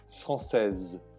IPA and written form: fʀɑ̃sɛz (Française)